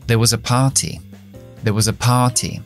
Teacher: Ahora la R de there no suena.